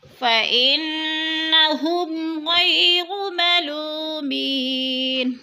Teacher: ہم پہ اظہار ہو رہا ہے، اظہار شفوی، ادھر ادغام نہیں کریں گے بلکہ ہم کو ظاہر کر کے پڑھیں گے. غی پہ یالین ہے، ملو پہ وہ مدہ ہے، تھوڑا سا کھینچ کر پڑھیں گے.